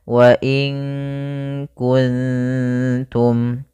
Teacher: ikhfa maka kita baca dengan bacaan Ikhfa maka cara bacanya yaitu samarkan nunnya kepada huruf ta makhraj daripada ta yaitu ujung lidah kita menempel dengan gusi atas